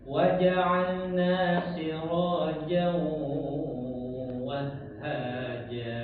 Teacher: Kemudian pelajaran yang selanjutnya adalah ee idgham bigunah. Ya, usahakan itu dinampakkan dengungnya di dalam hidung.